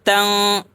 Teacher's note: اگر آپ نے نورانی قاعدہ کی کتاب پڑھی ہوگی تو اس میں آپ نے پڑھا ہوگا کہ حروف اخفا 15 ہیں، تو دیکھا یہ جاتا ہے تنوین کے بعد اگر حروف اخفا میں سے کوئی حرف آ جائے تو فا ہے یہ حروف اخفا میں سے ہے، تو تنوین کی آواز کو ناک میں چھپاتے ہیں